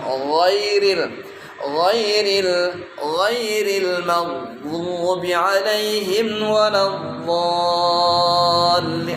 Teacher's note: Tapi kemudian tuh wujud dah sifatnya lagi. Sifat di antara sifat ghain itu isti'la, tebal ketika diucapkan.